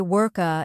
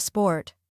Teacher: one more mistake I hear often is adding extra vowel sounds at the end of words many Learners say work uh instead of work or sport uh